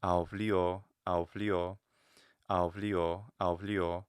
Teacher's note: It sounds like the O maybe is the one that's getting the stress. It's getting the emphasis because it's long, even though the pitch accent is there. And again, many languages, Italian included, will have a higher pitch before the stressed syllable.